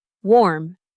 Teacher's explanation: Now for warm with the o o sound, your lips round slightly, like you're about to say o. Your jaw drops a little bit more.